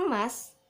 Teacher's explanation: Pada kata emas, bunyi E berada di tengah dan menjadi pusat tetapi tidak bulat